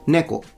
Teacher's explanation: this one is an atamadaka word, so it goes from high to low.